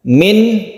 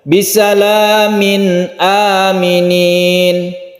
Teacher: Min jelas, kemudian tidak berdengung, artinya tidak panjang. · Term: izhar